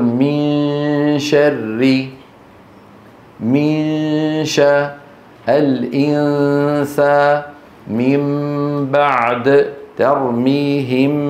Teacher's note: هذه الغنة في النون والميم المخفاتين اسمها غنة كاملة